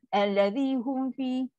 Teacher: Bibir tak sempat tutup. Hum fi. Ada ruang.